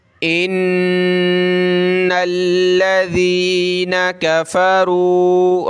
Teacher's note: रा को मोटा करें, रा वाव पे शुरू